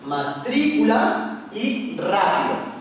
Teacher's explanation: como podemos ver la sílaba fuerte o sílaba tónica es la antepenúltima